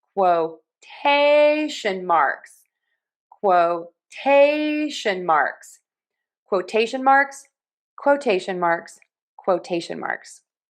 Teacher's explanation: Q most of the time is pronounced as K W.